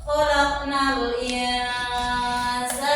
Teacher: Dibaca mendengung. Di sini hukum bacaannya yaitu ikhfa.